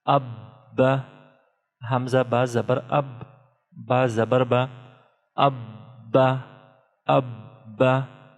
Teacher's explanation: we are pronouncing Ba two times due to Tashdeed, and we are pronouncing Ba strongly due to Tashdeed or Shad symbol